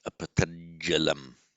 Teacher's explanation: The final t becomes a j with the following j of the next word.